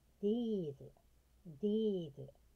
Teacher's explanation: あるいはです。ホスピタル、ホスピタル。これは病院。ナチュラル、ナチュラル。これアクセントはナーに行きます。ナチュラル。自然とか当然とかそういうことです。These、These、これはさっきも何度も言うように、上の歯と下の歯で、 上の歯と下の歯で舌を噛む。